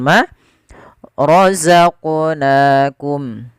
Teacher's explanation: harakat pada lafal Ma rozaqonakum pada lafal huruf qf yang disukunkan di sini ada bacaan kita namakan dengan bacaan Qalqalah artinya memantul bacaannya